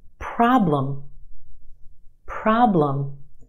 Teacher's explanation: two syllables in this word our first syllable is emphasized the aah problem is stretched and emphasized in the first syllable